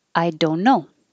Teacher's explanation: And instead of don't, you don't say the T at all.